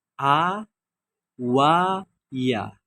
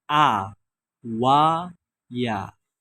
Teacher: Al-jauf ini dia keluar dari rongga. Ya, rongga mulut.